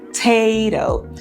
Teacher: Aí nós temos um tezinho com aspiração